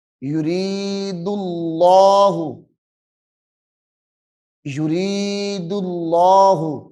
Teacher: اس میں جلالت اللہ کے لام کو یہاں موٹا کرنا ہے